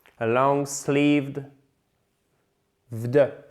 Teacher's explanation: Et en fait, là, la petite astuce, c'est que vous prononcez même pas le E